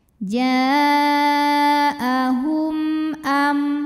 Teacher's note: Karena mim sukun menghadapi huruf selain mim dan ba, di sini hurufnya hamzah, maka mim sukun dibunyikan dengan jelas, jadi masih bunyi m. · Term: izhar syafawi